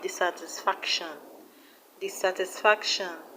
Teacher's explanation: The stress is on FAC, FAC.